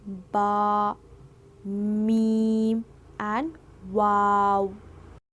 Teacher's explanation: दोनों होठों से तीन अक्षर निकलते हैं।